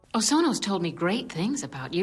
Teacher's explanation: a more mature, somewhat breathy voice in Disney's dub